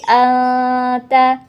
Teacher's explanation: Anta hukum bacaannya ikhfa Hakiki karena ada nun sukun bertemu dengan ta cara bacanya dengung disertai samar